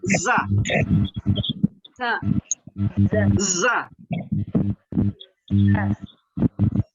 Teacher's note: jadi itu za itu berdesis besar itu. Desisnya besar.